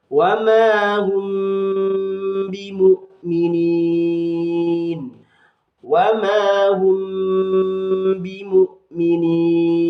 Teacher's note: Ada mim sukun bertemu dengan huruf ba, disebut dengan bacaan ikhfa syafawi, maka harus dibaca dengung dan dilamakan.